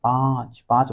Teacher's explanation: अनुनासिक व्यंजन जो है इसमें नाक से और मुंह से हवा निकलती है